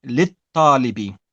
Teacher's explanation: It's deleted. So we don't say the lam of possession and then say the alif and the lam. We take off the alif and it becomes lit-talibi.